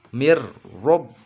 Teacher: Mir rob, nah, mir tipis karena sebelum ro ditasid harokatnya kasroh, kemudian ro nya tebal karena ro berharokat fathah